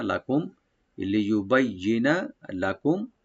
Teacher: মিম সাকিন এখানে আমরা জাহার করবো, এখানে এখানে কোনো গুণ হবে না।